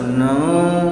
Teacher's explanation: तो ये जो नाक से बोले जाते हैं, उच्चारण होता है, वो अनुनासिक शब्द कहलाते हैं।